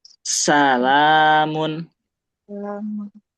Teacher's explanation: Udaranya keluar dulu. Nah, sebelum kita ngomong sa-nya, tapi udah keluar dulu napasnya. Nah, salamun. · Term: huruf sin